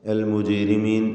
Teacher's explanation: അൽ മുജ്രിമീൻ, ജീമിൻ്റെ സുക്കൂൻ ഖൽഖല സുഗ്റ നൽകി ശബ്ദം ഹറക്കത്ത് പോലെ ചലിപ്പിക്കണം.